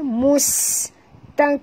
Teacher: Bunyikan hamas pada kaf.